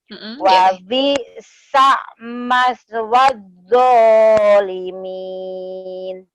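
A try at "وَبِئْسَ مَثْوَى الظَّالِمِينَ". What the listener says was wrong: Di sa-nya itu jangan dihentakan ya, Teh ya, digandeng ke huruf mimnya. Gitu yuk, karena nggak ada hamzahnya. Wa bi'sa, sa biasa aja. Wa bi'sa maswadzolimin.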